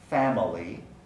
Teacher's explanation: of different syllables so the word family originally three syllables family the middle syllable second syllable is unstressed family so that would be pronounced with a schwa family but many speakers delete the schwa and pronounce family family